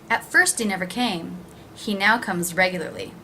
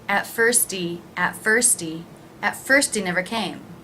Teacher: I do drop that H reducing the word and linking